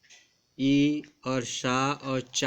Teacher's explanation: तो इनमें जो है ई और शा और चा वर्ग के जितने भी वर्ण होते हैं उनका उच्चारण तालु से होता है